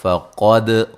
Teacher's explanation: اچھا جی، باللہ لفظ اللہ کو باریک پڑھنا ہے، اس سے پہلے زیر ہے، فقد قاف کو موٹا، دال پہ قلقلہ